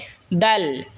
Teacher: জিহ্বার আগা সামনের ওপরের দুই দাঁতের গোড়ার সঙ্গে লাগাই উচ্চারণ হবে দাল। এই তা যেখান থেকে উচ্চারণ হয়েছে সেখান থেকে এই দালও উচ্চারণ হবে।